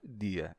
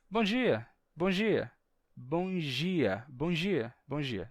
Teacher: às vezes as pessoas que dizem dia relaxam a pronúncia e em vez de dizer dia dizem simplesmente Gia sem fazer um som de D é só um sonzinho de J G Gia e falando rápido